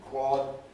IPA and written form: kwɒd (quad)